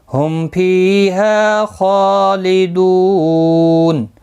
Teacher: میم ساکن کے بعد پھا ہے، اظہار شفوی ہوگا